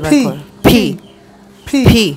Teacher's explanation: ফিটা উচ্চারণ হবে দুই ঠোঁট চেপে ধাক্কা দিয়ে বাতাসটা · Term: অ্যাসপিরেটেড